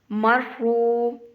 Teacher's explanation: را کو پر کر کے پڑھنا ہے۔ را کے اوپر شاد ہے تو را کو ہم تھوڑا سا سختی سے ادا کریں گے، مرحو، اور را کو ایک واو کے برابر لمبا کریں گے، اس کے آگے واو ہے، مرحو۔